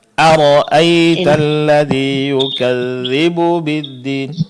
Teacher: Hati-hati jangan sampai hamzah yang pertama itu terpanjangkan ya.